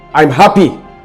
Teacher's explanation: It becomes intense. There's a tightening in the vocal cord and your articulation is sharp. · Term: angry emotion